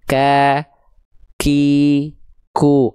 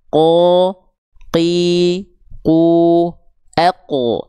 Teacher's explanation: Makanya kalau huruf kaf dia keluar percikan nafas, karena pangkal lidahnya dia agak keluar. Kalau qaf pangkal lidahnya lebih ke dalam.